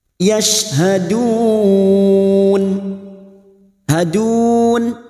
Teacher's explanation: bertemunya Mad dengan huruf hidup yang dibaca waqaf empat harakat kita panjangkan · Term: Mad Arid lukun